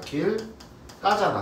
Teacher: 뒤에 안울림 예사 소리가 된소리로 변하는 거.